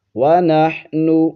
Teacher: نحنو پیش کی آواز او کی آواز ہوتی ہے او، وَنَحْنُ نُسَبِّحُ، نُسَبِّحُ بِحَمْدِكَ، بِحَمْدِكَ، یہاں پر میم ساکن ہے